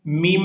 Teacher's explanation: یہاں میم مشدد پر غنہ کیا جائے گا